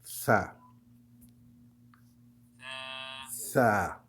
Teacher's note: Sa, la meilleure façon de le prononcer peut-être, c'est mettre la langue sous les dents et dire se, like ça. Donc la langue contre les dents supérieures.